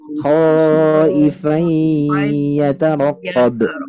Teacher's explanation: Nah, di idgham bi gunnah, Bu ya. Ya, idgham bi gunnahnya lebih lama durasinya, Bu, dengungnya.